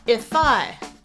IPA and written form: ɪfaɪ (IFY)